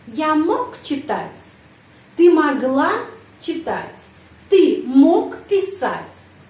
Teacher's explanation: penekanan intonasi berada pada kata mog